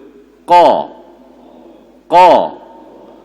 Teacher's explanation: Lidah yang tengah tak naik pangkal saja. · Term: isti'la